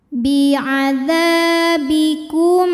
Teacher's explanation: huruf mim bukan huruf ba di sini hurufnya adalah Hamzah maka mim sukun ini kita bunyikan dengan jelas tanpa harus menahan bunyi m-nya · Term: izhar syafawi